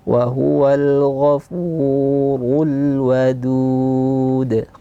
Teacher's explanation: Wa huwal ghafuru fu tipis, ru tebal, wadud waw tipis dan du tipis dengan qalqalah di akhir